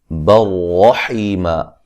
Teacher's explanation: اچھا جی، برحیمہ یہاں با کو جو ہے با کے اوپر دو زبریں ہیں، نون تنوین کا یہاں ادغام ہے لیکن بلا غنہ ہے، غنہ نہیں کریں گے. رحیمہ را کو خوب موٹا ادا کریں گے، حیہ مدہ ہے.